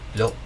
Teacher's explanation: To remember that glottal stop at the end.